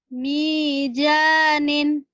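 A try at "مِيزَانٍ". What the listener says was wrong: Zanya kurang rapuh ya. Zaitun. Zainab. Mizanin.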